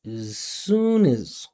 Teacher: the sound of my voice starting, coming up, being activated as I slide into z